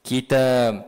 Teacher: Kalau kita matikan dia, maka ba itu akan jadi qalqalah.